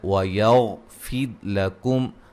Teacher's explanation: کا اظہار ہے، وَيَغْفِرْ لَكُمْ غین کو موٹا ادا کریں گے، را ساکن سے پہلے زیر ہے، را کو باریک پڑھیں گے ، اچھا جی میم ساکن کا یہاں اظہار ہو رہا ہے،